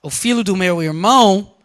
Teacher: o filho do meu irmão has more stress on irmão